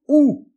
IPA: u